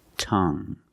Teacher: you have only the nasal sound there's no G it's just the sound tongue this is my tongue tongue example